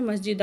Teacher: دال دو زبر دن ہے، ایک الف رہ جائے گی وقف میں